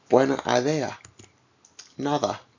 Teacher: When intervocalic, it is a bit softer, much like the voiced TH sound in the English word they.